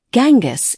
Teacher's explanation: In most English-speaking countries, Genghis is pronounced with a hard G, as in get. However, the Mongolian pronunciation is closer to Chinggis, with a soft G or CH sound.